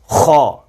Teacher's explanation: خا کا حرف آپ کے منہ کے اندرونی حصہ کے اوپر کی طرف سے ادا ہوتا ہے، خا۔ خا اوپر سے ادا ہوتا ہے اور اس کو موٹا بھی کرنا ہے